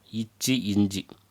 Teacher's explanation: இடைநா நடு அன்னத்தை தொடுவதனால் தோன்றும் எழுத்துக்கள்